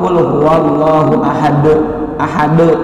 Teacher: Mati atau waqaf atau sukun. Ini ahadun, harokatnya dhammatain tapi waqaf alias berhenti, maka dipantulkan. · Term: qalqalah kubro